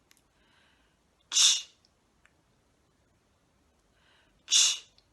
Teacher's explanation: This sound is made with a t and a sh produced together. We lift the tip of the tongue up to behind our front teeth, round our lips and turn our voice off. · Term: ch sound